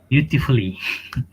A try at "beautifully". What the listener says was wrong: Beautifully, no, there is no a sound. beautifully, because there is no a. And also, have you noticed all this double L becomes one L because of the double consonant?